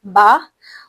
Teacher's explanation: ब इसे हम झटका नहीं देते बल्कि नॉर्मली बस ब और इसमें शद्दा यानी आवाज का रास्ता मुकम्मल बंद होता है और फिर खुलता है। जब आप दोनों होठ को मिलाएंगे तो रास्ता बिल्कुल बंद हो जाएगा।